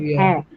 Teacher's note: this is a low front wall it's located where lower your the position of your tongue is lower in the mouth and yet it is produced in the front part of the mouth a right it goes down right the tongue is much down